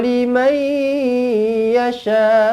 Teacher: Mai. Dengungkan di sini, masukkan nun ke dalam huruf ya idgham ma'al gunnah.